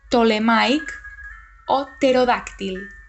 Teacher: la P del grup PT no s'ha de pronunciar